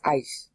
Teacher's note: the S at the end has a little bit of a sh sound on it it's not an sh and it's not really an S and it's not really a h it's it's it's a softening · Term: softened s, softened S